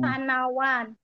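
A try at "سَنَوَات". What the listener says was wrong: Tak. Bukan sanawan. Sanawat, Pakai tak. Sanawat.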